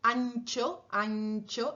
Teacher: La N que va antes de che, ancho, ancho, esa N está un poquito más atrás de la N normal.